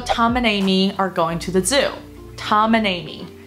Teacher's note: 因为它的 and 可以简说成 n